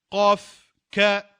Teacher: ce sont des lettres qui se prononcent et le son sort et provient du dessus de la gorge.